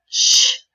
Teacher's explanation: The place of articulation, sh, is a palatal Why? It's a palatal because a sound made in the place between the top teeth and the higher part of our mouth.